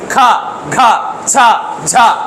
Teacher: పలికినప్పుడు మన నాభి నుంచి వెళ్లి గాలి బయటికి వస్తది మీరు పెట్టుకో చూడండి ఖ ఖ ఛ ఛ అన్నప్పుడు లోపలి నుంచి గాలి మన చేయికి తాగుతది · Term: మహాప్రాణ అక్షరాలు